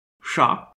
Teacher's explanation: an unvoiced retroflex fricative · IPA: ʂ